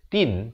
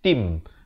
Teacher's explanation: Asalnya tin, tapi bila datang mim terus masuk jadi tim dengan kadar dengung 2 harakat. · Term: idgham bi gunnah